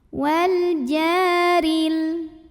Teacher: Wal jaril. Huruf ra dibunyikan secara tarqiq karena barisnya kasrah, maka bacanya tipis. Wal jaril. Alif lamnya namanya alif lam qamariyah karena alif lam menghadapi huruf qamariyah yaitu jim, maka lam sukun dibaca jelas.